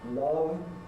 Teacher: v is a voiced consonant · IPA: [ lʌv ]